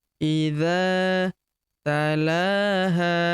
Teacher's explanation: Idza tala huruf la kita panjangkan dua harakat karena terdapat tanda alif kecil di atasnya yang ini. Idza talaha huruf ha kita panjangkan dua harakat ya karena di depannya terdapat alif